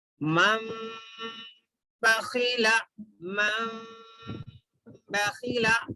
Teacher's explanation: اس کے بعد نون کے بعد میں با ہے، نون کے بعد با ہے، تو من بخیلا غنہ اور اخفا کے ساتھ پڑھنا ہے، یعنی نون کی آواز کو ناک میں لے جانا بھی ہے اور تھوڑی دیر ناک میں اس آواز کو روکنا بھی ہے.